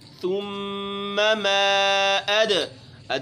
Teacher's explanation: ثم زبان پر زور دینا ہے۔ ثم ما اد میں قلقلہ ہوگا، دال ہے چونکہ حروف قلقلہ میں شامل ہے